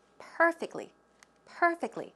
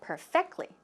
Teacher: where does the stress go it goes on the first syllable